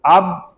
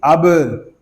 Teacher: با ساکن ہے، اس میں کلکلا خوب ظاہر کریں گے